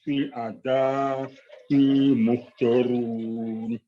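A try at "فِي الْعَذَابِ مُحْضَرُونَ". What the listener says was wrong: Ini jangan kepanjangan Pak. Fil adzabi muhdharun.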